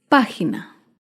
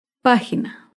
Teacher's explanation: esdrújulas llevan tilde otro ejemplo de una palabra esdrújula es página página se acentúa en la antepenúltima sílaba